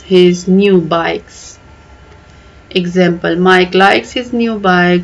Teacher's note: the repetition of the k sound at the end of each word adds a playful Rhythm